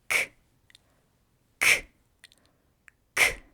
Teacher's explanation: To make the K sound, your mouth will open like this, with the back of your tongue touching the roof of your mouth, and then you'll let out a little puff of air